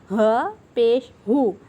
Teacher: انتہائی حلق میں سے یہ ادا ہونے والا حروف ہے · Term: حروف حلقی